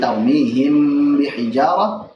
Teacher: yang dipilih adalah yang dibaca dengan ikhfa, yaitu dibaca dengan samar dan dipanjangkan gunnah